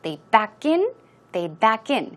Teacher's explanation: the stress goes on the second syllable, or in. And it basically means to go in reverse, go backwards into the parking space.